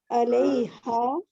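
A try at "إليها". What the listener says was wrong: علیہ نہیں, علیہ تو عین پڑھ رہی ہیں, الہ پڑھیں, الیہا,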